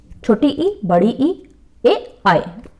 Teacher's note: जीभ का आगे का हिस्सा उठता है उसे कहते हैं अग्र स्वर